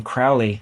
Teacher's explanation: the name Crowley is not a spondee, it's a trochee